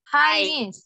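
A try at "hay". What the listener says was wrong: Bukan hi ya. Bacanya hi jadi e ya. Hey.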